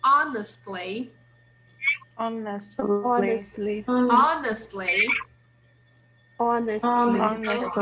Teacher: we don't pronounce the H. We say honestly.